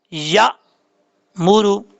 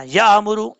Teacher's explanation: हमजा साकिन हमेशा झटके के साथ पढ़ा जाता है, बगैर झटके से नहीं पढ़ा जाता। झटका कैसे होता है, या मूरू, इस तरीके से कलकला के साथ झटका नहीं देना, या अमूरू, ये गलत है।